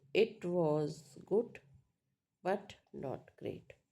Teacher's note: So for this contradiction, right, or implication incompleteness, we use rise fall tone. · Then fall rise tone, which falls and then rises.